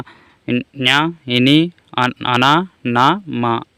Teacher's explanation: అంటే ముక్కుతో పలుకుతాం కాబట్టి వీటిని అనునాసికాలు అంటారు